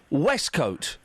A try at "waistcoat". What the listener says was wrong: No, so you're putting an E in it.